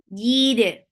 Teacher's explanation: For kasra, give E sound attached with dal. Dal will get sifa of qalqala.